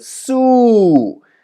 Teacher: And maybe you recognized I didn't say su, su, but I said su, su. So if I exaggerate a little bit, su, which is a falling tone. So this one is a tone mark on top.